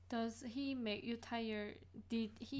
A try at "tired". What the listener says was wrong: Tire is the 자동차 그 wheel, tire. 그 D 소리 나, you know, otherwise, I am a tire.